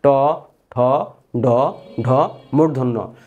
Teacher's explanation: দেখবেন এই জিহ্বাটা উপরের পাটি যে দাঁত আছে, দাঁতের মধ্যভাগে গিয়ে সংস্পর্শ হয় এবং জিহ্বাটা হালকা মাঝখানে এরকম বাঁকা বাঁকা হয় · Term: মূর্ধন্য ধ্বনি